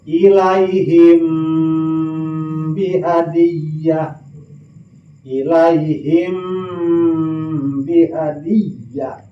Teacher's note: ikhfa syafawi lantaran kaluarna ikhfa dina bibir.